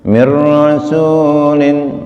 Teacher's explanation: ra idgham bila gunah, masuk tanpa dengung